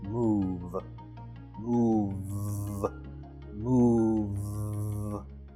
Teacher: My notes indicate that the final V sound is voiced.